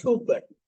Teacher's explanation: There's a small U sound in the second one, but there's no difference in meaning. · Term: free variation